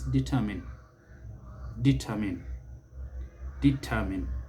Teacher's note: note that the stress is on the second syllable